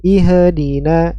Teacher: Ya, di sini dibaca dengan harokat kasrah ya, i dengan makhraj hamzah, i masuk ke huruf h besar ya, h yang keluar dari tenggorokan bagian bawah. Suaranya mengalir.